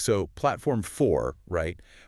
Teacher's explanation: Practice that rising intonation at the end that clearly signals a question. Right, getting the melody of the question right.